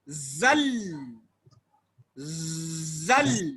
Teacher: تو کے اندر آواز پھسل رہی ہے. اس کے بعد لام ساکن آ کر کے اس پھسلنے والی حرکت کو بریک مار دیتا ہے. زل زل بریک لگ گیا، لیکن پھر وہ پھسلن ہوتی ہے تو کہا زل زلا، زل زلا.